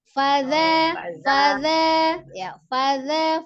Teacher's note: fa-nya satu harakat, za-nya baru 2 harakat. Fadza, tapi za-nya lembut, ujung lidah ada di ujung gigi seri atas.